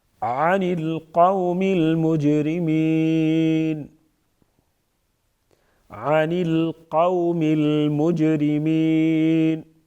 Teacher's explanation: قو واولین جلدی پڑھیں گے اور نرمی کے ساتھ ادا کریں گے، قوف کو اوپر پڑھیں گے، قوم المجرمین، جیم حروف قلقلہ میں سے ہے، قلقلہ کریں گے یعنی آواز میں جنبش پیدا ہوگی جیم کی ادائیگی کے وقت۔